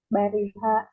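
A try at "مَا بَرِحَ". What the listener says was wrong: Jangan bariha aja, harus pakai ma. Ma bariha.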